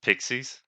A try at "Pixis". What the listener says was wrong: I think it's pronounced Pixis.